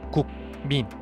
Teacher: 민의 첫소리인 미음은 두 입술 위치에서 발음되는 비음이고 그 앞에 위치한 국의 받침 기역은 여린 입천장 위치에서 발음되는 파열음입니다. 비음은 공기가 코 속을 흘러나가는데 비음 앞에 비음이 아닌 자음이 위치한다면 입속을 흐르던 공기의 흐름을 끊고 코 속으로 바꾸어야 하는 번거로움이 있습니다.